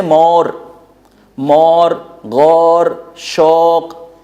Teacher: اس میں نہ آپ لین پڑھتے ہیں نہ مدہ پڑھتے ہیں، یہ اپنا ایک اردو کا انداز ہے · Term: مجہولانہ انداز